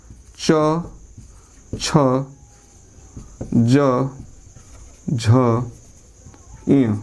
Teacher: दूसरा होता है तालु, तालु या तालव्य। तालव्य, तालु या तालव्य से होता है च वर्ग